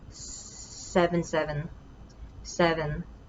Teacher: i would prolong the voiceless s